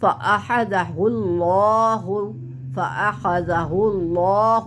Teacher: لفظ اللہ کو موٹا کریں گے کیونکہ پہلے پیش ہے